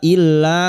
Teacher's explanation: lam alif yang bertasdid masuk illa lam alif kita panjangkan 2 harakat mad tabi'i